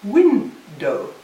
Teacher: Well, what I want to show my students is that it's window. So that the stress is on the first, the second is a full vowel, but the full vowel is not stressed. It's an unstressed full vowel.